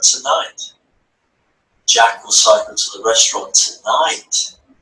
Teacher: the stress on the word tonight not tomorrow